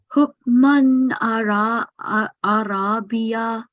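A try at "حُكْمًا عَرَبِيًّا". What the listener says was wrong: This one, kalkala is now fine, but it's not biya, but it's bijan. Because there is a shad, yeah. Because there is a shadda, so you need to be stressing on the ya. And ra does not need to be prolonged because it's just a short vowel, so it'll be 1 second only. Arabijan.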